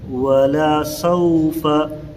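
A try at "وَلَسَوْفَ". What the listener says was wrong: سین نہیں ادا ہو رہا ہے۔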